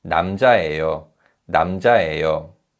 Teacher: in natural speech, the vowel 예 in 예요 is pronounced as 에요 rather than 예요